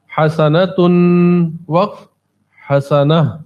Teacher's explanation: اگر ایک پیش ایک زبر اور ایک زیر بھی ہو تو گولتا وقف کی صورت میں ہائے ساکنہ کی آواز دیتی ہے